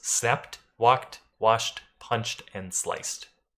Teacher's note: an unvoiced sound, which means that you're only using your mouth and not the vocal cords to make the sound. These are things like the p in snap, the k in walk, the sh in wash, the ch in punch, or the s of slice, which gives us snapped, walked, washed, punched, and sliced.